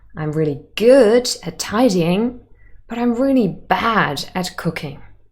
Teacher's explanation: here the words good and bad have contrastive stress because we want to contrast